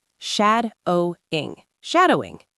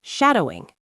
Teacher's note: 3 syllables, stress on the first one.